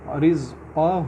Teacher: قاف کو تھوڑا پر کریں گے، موٹا کریں گے